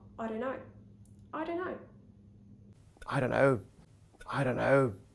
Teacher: so we're not pronouncing the full o diphthong we're reducing it to schwa